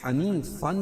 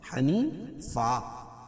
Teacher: 2 زبر کی تنوین پر جب بھی وقف کریں گے تو ایک زبر کے قائم مقام الف پڑھیں گے اور دوسری زبر اپنی حالت پر باقی رہے گی، جیسے حنیفن سے حنیفا۔